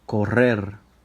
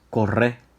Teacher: they may eliminate ending R's on verbs and highlight the resulting vowel